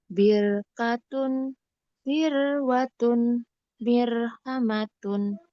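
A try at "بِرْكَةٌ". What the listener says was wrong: Jadi tahan dulu sebentar. Yang ro itunya masih, Bun, masih kurang tebal.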